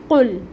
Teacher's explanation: قاف جو ہے یہ حروف مستعلیہ میں سے ہے اور اس کے اوپر پیش کی حرکت ہے، جس کے لیے ہم اپنے ہونٹوں کو گول کریں گے۔